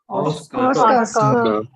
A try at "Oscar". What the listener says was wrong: When you say Oscar, you don't have to say the R in the end. You write R, Oscar, but you say Oscar, C-A-H, Oscar, like that, okay?